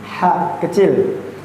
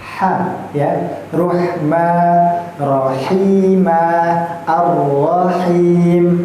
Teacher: maka kayak orang hanya mengeluarkan nafas biasa. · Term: huruf ha kecil